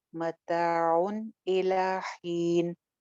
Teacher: یہاں پہ اظہار ہو رہا ہے کیونکہ تنوین کے بعد آگے حمزہ ہے، غنہ نہیں کریں گے. الی حین مد عارض کر کے سٹاپ کریں گے.